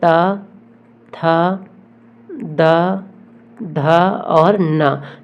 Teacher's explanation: त वर्ग का उच्चारण दंत से होता है